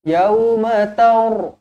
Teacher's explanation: ra dibaca tebal kerana sebelumnya berbaris atas.